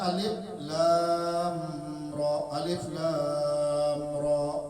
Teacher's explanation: Alifnya pendek, lam matnya 6 harakat, lam lawan ra itu idhar syafawi, alif lam ra.